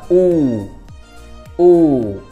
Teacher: Nguyên âm đơn thứ tư ngày hôm nay đó là âm u dài. Đối với âm u dài, chúng ta sẽ đọc ngân và ngang ra một chút xíu.